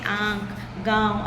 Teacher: अनुनासिक जो है इसका उच्चारण मुह और नाक से होता है